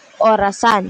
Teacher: bilog ng bahagya ang labi tapos nakataas ng konti ang dila sa likod